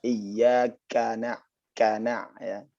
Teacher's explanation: K itu di depan dia. Lidah bertemu dengan langit-langit yang keras. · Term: Kaf